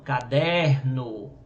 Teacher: caderno a sílaba tônica dele é o der